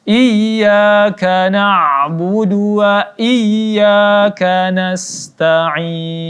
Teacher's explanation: Iya ditekan karena disini ada huruf yang ada bertasydid maka ianya ditekan